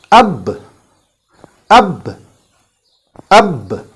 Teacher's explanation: The sound stops or the last impact is at the wet part of one lip touching the other lip. So that is the makhraj or articulation point of this letter ba, between the wet part of our 2 lips here.